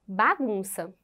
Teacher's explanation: temos aí a penúltima sílaba como sendo a mais forte tão essa penúltima sílaba ela é a sílaba tônica da palavra